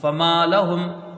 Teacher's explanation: لام زبر لا ہم پشم فما لہم. فا کو جلدی پڑھا جائے گا، میم کو ایک الف کی مقدار کھینچ کے پڑھیں گے. لام کو جلدی پڑھیں گے، ہا کو میم سے ملا کے یہاں جلدی پڑھیں گے.